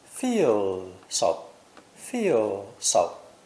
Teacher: if you listen carefully the Z is not actually pronounced at all